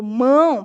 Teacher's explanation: Você vai sentir esse ar saindo aqui pelas narinas, né? Então, nós temos um som nasal, ele sai tanto pela boca quanto pela narina.